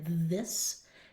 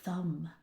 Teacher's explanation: And then when the motor's off it's thumb. So, everything's exactly the same except for the vocal cords being on and off